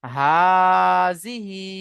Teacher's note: খাড়া জের ইয়ামাদ্দা সমতুল্য হয় তাই খাড়া জেরকে এক আলিফ পরিমাণ টান দিয়ে পড়তে হবে।